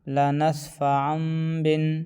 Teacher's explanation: تنوین کے بعد با آ جائے تو تنوین کو میم سے بدل کر پڑھیں گے